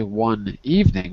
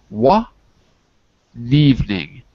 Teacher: We pass the consonant to the next vowel, and we don't say one evening, we say wa evening. We pass the N to the word evening. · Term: link words